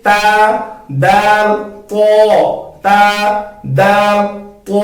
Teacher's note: تا اور دال کو ہم نے باریک پڑھنا ہے اور تو کو ہم نے موٹا پڑھنا ہے